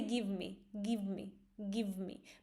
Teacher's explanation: But this v is very subtle. Like you barely notice it. That's why sometimes you may hear it as gimme, gimme.